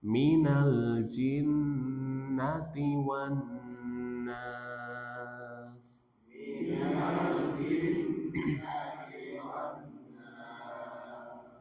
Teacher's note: jin ada gunnah di situ, nun tasydid